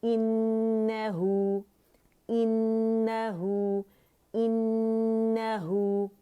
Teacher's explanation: नून जो है हर गुन्ना मुशद्दद है, और इसमें हम अकमल ग्रेड का दी मोस्ट कंप्लीट लॉन्गेस्ट गुन्ना हम करेंगे